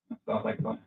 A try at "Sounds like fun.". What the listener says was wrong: Did you hear the way you just say sounds like fun? Did it in fact sound like fun? Yeah, I mean, If you're gonna say something like sounds like fun, then make it sound fun. Unless you're trying to be sarcastic.